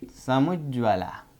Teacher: आधा ज फिर आधा ज, द्वित्व